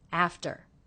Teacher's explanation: the second syllable very low in pitch flat and quick